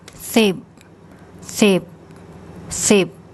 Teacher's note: It's a high class initial consonant. It ends with a P sound, so it's a dead syllable, and this is a short vowel, so that's a low tone.